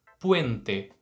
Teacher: Nessa palavra a gente vai ter a letra E compondo também um ditongo, né, um encontro vocálico, o E, e aí a gente vai dizer dessa forma, o E, puente. De novo, letra E no final não transforma em I, então diferente do que a gente faz aqui no português, você vai manter a letra E com este som, seja a primeira letra E ou a segunda letra E da palavra.